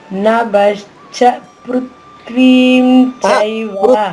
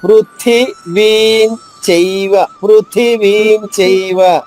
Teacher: పృథ్వీ అనగానే థా పొల్లు అవుతుందండి.